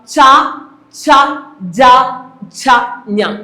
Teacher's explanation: താലുവിന്റെ സഹായത്തോടുകൂടി ഉച്ചരിക്കുന്ന അക്ഷരങ്ങൾ താലവ്യം